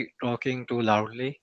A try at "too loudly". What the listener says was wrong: too loudly না, too loudly. টান দিতে হবে. Yes, স্ট্রেস দিতে হবে ওখানে.